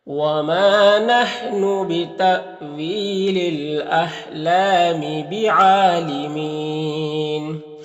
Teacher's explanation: یا مدہ ہے اور پھر یہاں پر وقف کریں گے تو مد عارض وقفی ہوگا